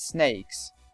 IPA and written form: sneɪks (snakes)